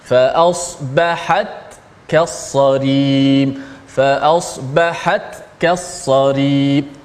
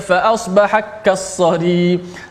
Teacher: kita baca dengan menjelaskan ta itu dimatikan, dibunyikan jelas matinya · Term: huruf ta